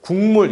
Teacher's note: 기역, 파열음이었잖아요. 그죠? 근데 뒤에 니은이라는 비음을 만나서 이응이라는 비음으로 바뀌었죠. 여기 기역이요, 뒤에 미음이요, 이거 비음이잖아요.